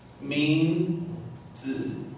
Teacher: This should be the fourth tone. But like when we speak, we use the light tone.